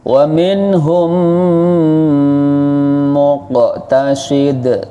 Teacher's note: Terus dalam membaca idgham syafawi harus dengung. Tidak sekedar mingkem, tapi juga dengung.